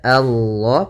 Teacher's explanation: panjangkan Allahnya dua harakat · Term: mad thii